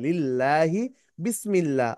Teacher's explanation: আল্লাহ শব্দের ডানে যদি জের হয় তাহলে পাতলা করে পড়তে হবে